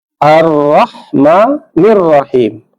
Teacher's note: Pada ayat yang ketiga, ini juga kita temukan bacaan alif lam samsiah. Alif lam samsiah ini tidak dibaca, tapi langsung pada ra.